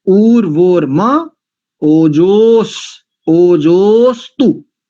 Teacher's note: ओजो अस्तु नहीं करेंगे, अकार का लोप हो गया है